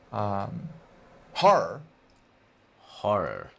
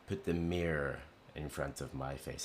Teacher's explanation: the 2 R's kind of run together and the vowel sound that comes between them almost disappears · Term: long R sound